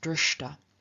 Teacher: the palatal S sound, the palatal sibilant, in front of a T changes into sh, the retroflex S sound, and after this retroflex sh, the T, the dental sound T, itself turns into the equivalent retroflex sound, namely into t.